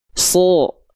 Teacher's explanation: Suaranya mencondong pada vokal O ketika fathah. Karena apa? Karena pangkal lidah naik, karena dia huruf tebal, lalu mulutnya cuma buka mulut, nggak pakai sedikit senyum. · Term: huruf shad